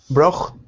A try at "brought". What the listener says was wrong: Brought. Brought. Brought. There's no ch. Take out the ch. Brought.